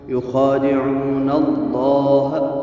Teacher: لفظ جلالہ سے پہلے زبر ہے حرف کے اوپر، اس کو منہ بھر کے آواز نکالیں گے، اس کو موٹا پڑھیں گے۔